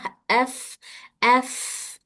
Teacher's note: सिफत हमस के फ में एफ एफ एयर फ्लो हो रही है